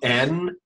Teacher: you'll feel the N, which is almost vibrating up here in your nose. It's, you can feel it.